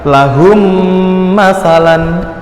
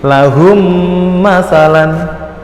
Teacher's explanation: ada huruf mim sukun bertemu dengan huruf mim, maka disebut idgham mislain